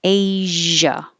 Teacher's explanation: So it uses the zh, which is the same position as sh. So if you have trouble finding the position for zh, make sh and then turn on the sound, the vibration, make noise in your throat.